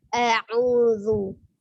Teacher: Ujung lidah bertemu dengan ujung gigi seri atas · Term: zal